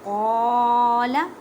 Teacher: الف مدہ کا قاعدہ کریں، مینس کے ایک الف کی مقدار میں کھینچ کر پڑھیں